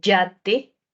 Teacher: que es la y de yoyo la y de yate entonces esa y también se pronuncia en el punto más alto que es la zona palatal